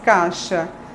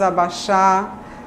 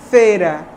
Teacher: A gente tende, em muitos dialetos do português brasileiro, a fazer um monotongo.